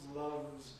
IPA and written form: lʌvz (loves)